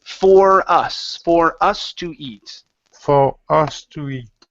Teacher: for hus to eat okay almost so you're saying for hus you're pronouncing an H when there's not an H at the beginning of the word